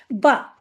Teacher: ब दोनों होठों के तर हिस्से मिलने से ब अदा होता है